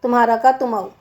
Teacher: तुम्हारा में रा का लोप हो गया, और ओकार है ना तो ओ की मात्रा लग गई।